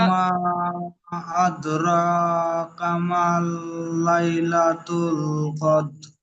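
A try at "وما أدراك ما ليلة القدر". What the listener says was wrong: এখানে কামাল লাইলাতুল হয়ে গিয়েছেন, কামাল হবে না, কামা, মিম পরিষ্কার মা। ওয়ামা আদরাকা মা লাইলাতুল কদর।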